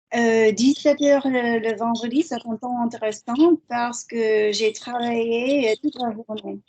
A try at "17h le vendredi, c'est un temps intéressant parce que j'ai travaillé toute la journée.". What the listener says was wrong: Lovely. Temps or heure?